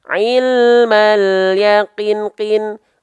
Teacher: 2 harokat itu seperti kadar kita melafalkan kin sebanyak 2 kali.